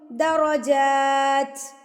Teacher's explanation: जीम के ऊपर खड़ी ज़बर है तो इसको आपने एक हरकत के बराबर खींच के पढ़ना है।